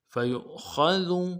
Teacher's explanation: یہ واو حمزہ کی شکل کا ہے، اس لیے یہاں پہ جھٹکا دیں گے۔ خا کو موٹا ادا کرنا ہے، دال کو باریک ادا کرنا ہے۔ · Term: حمزہ بشکل واو